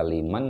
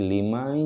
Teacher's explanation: Jadi suara nunnya tidak dibaca liman tetapi limai, masuk ke dalam ya yang bertasjid. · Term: Idgham bi gunnah